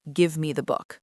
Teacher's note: The stress is on give and book.